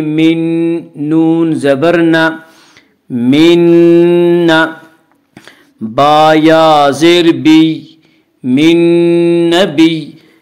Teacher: نون ساکن کو نون سے ملا کر غنہ کے ساتھ پڑھیں گے اور اسے ادغام مع الغنہ ادغام ناقص کہتے ہیں۔ من نون